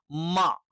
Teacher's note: മാ ഉച്ചരിക്കുന്ന സമയത്ത് ചുണ്ടുകൾ മൃദുലമായി അത്ര പവറോട് കൂടിയല്ല അല്ലെങ്കിൽ അത്ര കഠിനമായ രീതിയിലല്ല നമ്മൾ എന്ത് ചെയ്യുന്നത് അടച്ചു വെക്കുന്നത്. മ എന്ന് പറയുമ്പോൾ ചുണ്ട് അത്ര ശക്തമായി അടക്കുന്നില്ല.